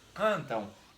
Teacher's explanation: esse N, na contagem de fonema, some, vira um tio no A. E esse M se transforma em U.